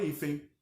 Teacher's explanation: É como se eu tivesse o E nasalizado e um izinho no final, apesar de estar escrito a grafia C, E e N.